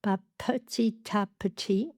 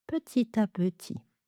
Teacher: Donc là, on a la liaison, on a un beau découpage des syllabes en syllabes ouvertes, qui se terminent toutes par un son de voyelle, petit à petit, petit à petit. Donc le P est moins marqué qu'en anglais, c'est-à-dire on va lâcher moins d'air derrière